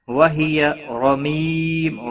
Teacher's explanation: را زبر کی وجہ سے پور پڑا جائے گا